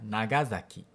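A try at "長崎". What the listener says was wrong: 2 erros. Primeiro, za não se acentua, quer dizer, a penúltima sílaba não se acentua, e quando está escrito em S, em letras romanas, é sempre o som de S. Então é Nagasaki.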